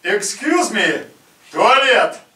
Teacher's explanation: And that's a typical Russian projection. Full-bodied voice.